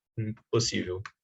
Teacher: Mas ponto de articulação. P é bilabial, então faz com que o N, que é nasal, também se torne uma nasal bilabial.